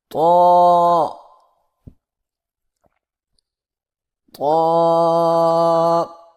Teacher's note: زبان کی نوک کو سامنے والے اوپر کے دو دانتوں کی جڑ سے لگا کر اور زبان کے پچھلے حصے کو تالو کی طرف بلند کرتے ہوئے موٹی آواز میں پڑھیں